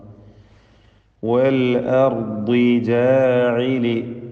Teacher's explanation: ദ്വാദിന് കസ്റായത് കൊണ്ട് കുറഞ്ഞ തഫ്ഖീമാണ് നൽകേണ്ടത്.